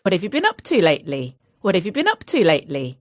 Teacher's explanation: I use the schwa and I link a lot. So, have becomes of, what of. You becomes ya, what of ya.